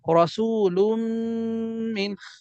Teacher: তানবিনের পর ইদগামের হরফ মিম আসছে, গুণনা করছি মিলায় পড়ছি